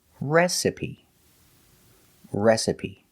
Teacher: The stress is on the first syllable,